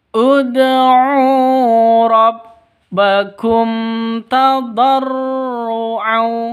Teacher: Di sini ada mim mati bertemu dengan ta. Mim mati bertemu dengan ta. Jelas terang karena bacaan izhar safawi.